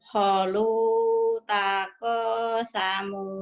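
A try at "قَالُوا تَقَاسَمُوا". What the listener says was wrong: Bukan holu, qalu. Bukan, yang panjangnya ko-nya panjang. Qalu, panjang. Qalu. Qalu taqasamu. Qalu jangan bukan holu ya, qalu.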